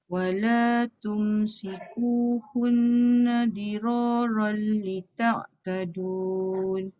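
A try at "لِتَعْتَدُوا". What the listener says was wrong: Ta'tadu sahaja tak ada nun. Lita'tadu.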